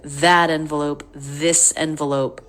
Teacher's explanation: we don't reduce the vowel in that when you could be like pointing as you're talking about it